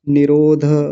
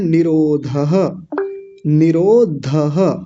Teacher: विसर्ग को नहीं बोलेंगे। कई बार होता है ना विसर्ग को छोड़ देते हैं और क्या बोल देते हैं जल्दी में निरोध ऐसे ही बोल देते हैं